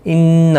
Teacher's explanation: انہ نون مشدد پر غنہ ہوگا